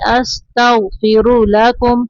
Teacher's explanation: استغفر را کے اوپر پیش ہے تو را کو اوپر پڑھیں گے